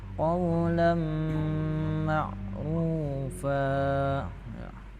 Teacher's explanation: Nah, di situ qawlam. Karena di situ tanwin bertemu mim tasdid maka membacanya itu didengungkan. Maka hukumnya ini idgham bi gunnah.